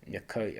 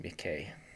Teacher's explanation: We can see that the pronunciation of the E, the S sound, the front vowel is a bit different depending on whether it comes after the light M or the dark K. It's more retracted, more like a schwa sound after the dark K